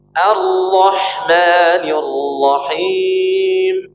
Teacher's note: Jadi sebelum mengucapkan ro-nya, ada alirannya dulu ketika masuk ke tasydidnya.